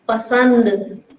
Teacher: जो आवाज है वो नाक से भी बाहर आती है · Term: अनुस्वार